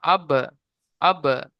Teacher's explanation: আব বলে চেপে দিলে হবে না, আওয়াজটা আবার ছেড়ে দিতে হবে সঙ্গে সঙ্গে। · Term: কলকলা